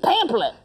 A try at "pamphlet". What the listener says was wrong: No, it sounds like a mini pamper. Pamphlet. It sounds like it's pamphlet. A pamphlet for like a small animal. it spit. It's a pamphlet.